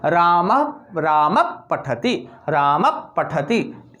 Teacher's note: अर्थात विसर्ग तो है लेकिन इसका उच्चारण बहुत आधा होगा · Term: उपधमानी